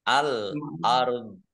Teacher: alif lam komariah ditandai lamnya dibaca sukun, kemudian roknya sukun, dzoknya juga sukun karena wakof, maka dibaca antara rok dan dzok.